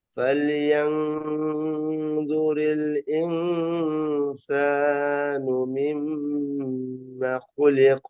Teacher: এখানে মিমের উপর তাজদিদ ওয়াজিব গুন্না